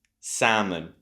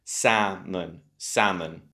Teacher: You got stress on the first syllable.